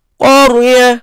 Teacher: Ra tebal sebab sebelumnya baris atas.